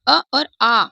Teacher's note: ये अ और आ ही दो स्वर हैं जो कंठ से उच्चारित होते हैं।